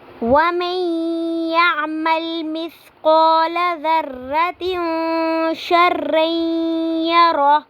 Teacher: اب ہم نے وَمَن يَعْمَلْ پہ ادغام مال غنہ ہو رہا ہے، غنہ کے ساتھ ادغام کریں گے، آواز کو ناک میں لے کے جائیں گے اور تھوڑی دیر کے لیے ہم اس پر رکیں گے. میم کو یا کے ساتھ ملا کے پڑھیں گے، مدغم کر کے پڑھیں گے.